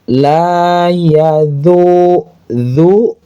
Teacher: menggunakan huruf dzal di ujung lidah. Ingat, bedakan antara huruf dza di ujung lidah.